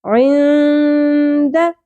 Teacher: نون ساکن پہ اخفا مع الغنہ ہوگا، حروف اخفا میں سے دال آ گیا، نون عند نہیں پڑھنا، عند.